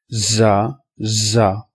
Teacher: زا کو آپ زور دے کر پڑھتے ہیں، سیٹی کی آواز کے ساتھ پڑھتے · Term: صفیریہ حروف